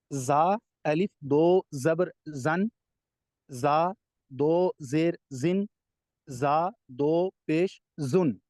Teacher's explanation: یہ سختی سے ادا ہوتا ہے، وصل ساؤنڈ ہے، حروف صفیریہ سے ہے